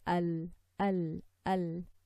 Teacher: it's not the English L because of the tongue is not elevated · the tip of the tongue will be touching the gums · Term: drifting of sound